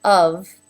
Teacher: he started to move his lip up into the correct position but he stopped making sound with his vocal cords if he had continued to pass air it would have sounded